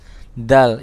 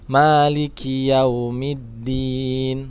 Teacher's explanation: dal itu makhrajnya adalah ujung lidah bertemu antara gigi seri atas dan gusi di tengah-tengahnya. Dal, ingat dal beda dengan d.